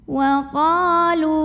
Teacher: Wa qa mad tabi'i karena ada alif yang didahului baris fathah. Maka cara bacanya qaf yang fathah dipanjangkan 2 harokat saja. Wa qalu, lu juga mad tabi'i karena ada waw sukun yang didahului baris dhammah.